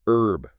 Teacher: Like in the UK, you often hear herb with a silent H.